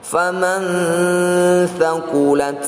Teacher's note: Nun sukun yang dilanjutkan dengan tsa merupakan bacaan Ikhfa Hakiki . Bacalah dengan dengungan dua harakat